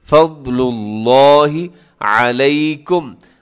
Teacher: لفظ اللہ کو اپنے بھارا پڑھنا ہے، موٹا کر کے پڑھنا ہے